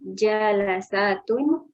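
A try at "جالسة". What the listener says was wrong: Salah Ibu, bacanya salah. enggak ada. Jalasatun enggak ada. Apa ini, Bu? Jalisatun yang benar Ibu.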